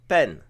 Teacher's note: La syllabe se termine par une consonne sonore, donc elle est vivante. La consonne initiale est moyenne, donc le ton est plat. เ ป ็ น La consonne initiale, c'est notre B.